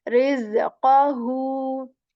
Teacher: we will stretch here for two counts again and say qahu, like who for two counts